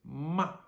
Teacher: it's a high to low sharp falling tone so listen M M M okay so you are not yelling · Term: fourth tone